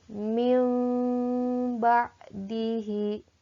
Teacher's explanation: bunyi nun sukun atau tanwin yang bertemu dengan huruf ba menjadi bunyi mim. Makanya kalau kalian perhatikan di dalam Al-Quran itu suka ada mim kecil ketika hukum tersebut adalah hukum iqlab.